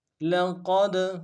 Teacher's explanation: لقد، لام کو نون سے ادا کریں گے، قوف کو دال کے سامنے لانا ہے موٹا ادا کرتے ہوئے، دال حروف قلقلہ میں سے جب ساکن ہوگا قلقلہ کریں گے